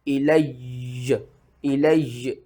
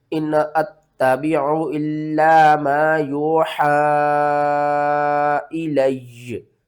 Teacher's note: تو ساکن تو آلریڈی یا ہے، لیکن جو متحرک والا یا ہے نا اس کو بھی ہم نے ساکن کرنا ہے، اور 2 یا اکٹھے پڑھے جائیں گے